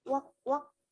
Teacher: Ini bunyinya AU-nya bunyinya O.